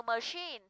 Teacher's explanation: thì trọng âm rơi vào âm dài, không rơi vào ơ